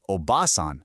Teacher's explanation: holding that ah for just a bit longer, that means grandmother. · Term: vowel length